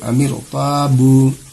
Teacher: را ساکنہ سے پہلے زیر آ رہا ہے لیکن دوسرے کلمے میں ہے، اسی لیے را کو موٹی کر کے پڑھیں گے